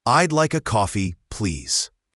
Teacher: The word please should have a clear Z sound at the end, not an S.